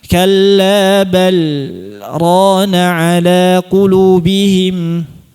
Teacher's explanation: kita bacanya izhar disaktah disertai dengan jeda sebentar. Berhenti sebentar tanpa mengambil napas. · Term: izhar dengan saktah